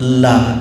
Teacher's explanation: la di depannya ada alif mad tabi'i, panjangnya 2 harakat